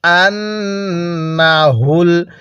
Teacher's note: অনেকেই আন্না নুনের মধ্যে টান দিয়ে থাকে নুনের মধ্যে টান দিব না